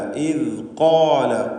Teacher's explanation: ഖാഫിനും അതിൻ്റെ ദീർഘാക്ഷരമായ അലിഫിനും തഫ്ഖീം കൊടുക്കണം. സ്വരഭാരത്തോടെ തടിപ്പിച്ച് ചരിക്കണം. ഇസ്തിഅലാൻ്റെ ഹർഫാണ് ഖാഫ്.